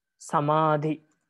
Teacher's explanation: middle syllable is heavy and the uh other two are light